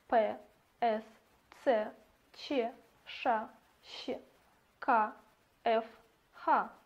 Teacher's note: При их произнесении голосовые связки остаются расслабленными. То есть воздушная струя свободно проходит через гортань и тон не возникает. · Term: Глухие согласные